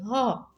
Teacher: હ છે એ સંઘર્ષી છે હ હવે બોલવામાં થોડોક સંઘર્ષ થાય છે